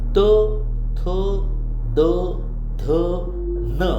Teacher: त थ द ढ न हे दंत्यवर्ण आहेत